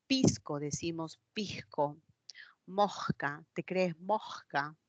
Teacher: la aspiración de la consonante S, de ese sonido alveolar fricativo, como si fuese una J